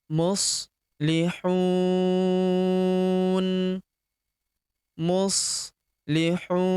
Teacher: Huruf hu kita panjangkan 4 atau 6 harokat karena di depan huruf hu terdapat waw sukun sebelum huruf pemberhentian dan huruf pemberhentian huruf na di sini kita sukunkan atau kita matikan.